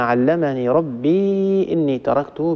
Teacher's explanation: بإسكان الياء يقرأ حفص